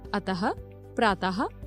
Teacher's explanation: आहा आहा को विसर्ग कहा जाता है। विसर्ग का उच्चारण हल्के ह की तरह एक छोटे से झटके के साथ किया जाता है, जैसे अतः, प्रातः आदि।